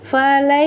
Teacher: huruf ra berharokat fathah dibaca secara tafkim tebal